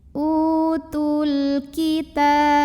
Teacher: Karena alif lam ketemu dengan huruf qamariyah yaitu kaf. Maka lam sukun ini dibaca dengan idhar atau jelas bunyi lamnya. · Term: alif lam qamariyah